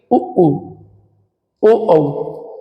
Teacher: यानी कि जब भी इन्हें बोलोगे तो आप देखो लोंगड़ी जैसा होट बाहर निकल आएंगे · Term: वृत मुखी स्वर